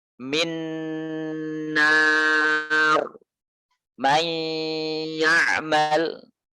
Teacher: Idgham bi gunnah itu gunnahnya memanjang. Idgham bi gunnah, gunnahnya memanjang.